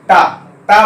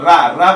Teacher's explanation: जीभ हमारी लटक कर ऊपर जाके स्पर्श करती है टा, परंतु उसी मूर्धन्य वर्ण रा भी है, तो रा रा बोलिए, देखिए हल्का स्पर्श होगा रा बोलने से।